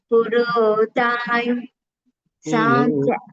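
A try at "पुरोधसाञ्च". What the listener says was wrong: தா இல்ல,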